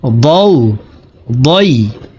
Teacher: ضاد হরফকে দালের উচ্চারণ করা যাবে না, ضاد হরফকে মোটা করে উচ্চারণ করব